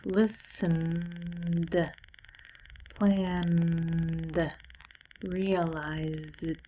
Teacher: in these words the last sound of the word has vibration